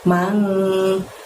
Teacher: ada nun mati di sana, maka dibaca samar dan dengung selama 2 harokat.